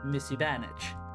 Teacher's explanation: So rather than having the vowel harmony completely maintained for both parts, musi, bonage, because of the compound nature of the noun, musi, and the brighter or front aspect of the vowels bleeds into bonage, becoming musibanage